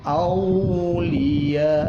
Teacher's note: Auliya ada mad dan diikuti hamzah dalam satu kalimat namanya mad wajib ya, mad wajib. dipanjangkan sepanjang 6 harokat, 6 ketuk.